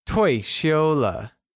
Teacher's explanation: 退 carries the falling tone or the fourth tone. 休 carries the high level tone or the first tone. 了 carries the neutral tone or the fifth tone.